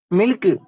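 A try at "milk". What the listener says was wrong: டேய், அதை ஏன்டா சில்க் மாதிரி சொல்ற? கே நல்லா மென்மையா சொல்லணும். மில்க்.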